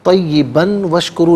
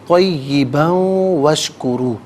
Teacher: با پر دو زبر کی تنوین ہے، اسے وشکرو کی واو کے ساتھ ملا کر واو کی آواز کو غنّے کے ساتھ ادا کریں گے